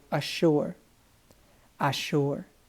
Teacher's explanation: listen how those two S's and then the U, it almost makes a SH sound